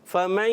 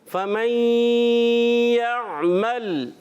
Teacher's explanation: نون کی آواز یا میں جب داخل ہوگی تو نون کامل طور پہ مکمل طور پہ ادا نہیں ہوگا بلکہ غنّے کی صورت میں آواز آئے گی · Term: ادغام